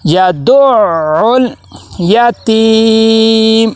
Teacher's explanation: آگے عین کو لام کے ساتھ ملائیں گے، لام کے اوپر جزم آ گئی ہے تو یہاں پہ کلکلا نہیں ہونا چاہیے